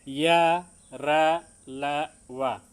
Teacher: जिह्वा उच्चारण स्थान को थोड़ा स्पर्श करती है। जैसे इसमें आ जाएंगे अंतस्थ व्यंजन, य, र, ल, व। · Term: ईषत स्पृष्ट